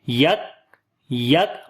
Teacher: کاف کے اوپر صفت شدت کریں گے، باریک بھی پڑھیں گے اور صفت ہمس بھی ہوگی . صفت شدت پہلے پڑھیں گے، یک یک، آواز